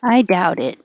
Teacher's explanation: this t and i connects and it will sound like i dow did